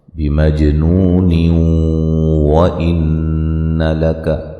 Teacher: ملانے کی صورت میں نون تنوین کا ادغام مع الغنہ ہوگا